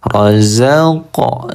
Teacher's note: Qalqalah ya, kita baca memantul.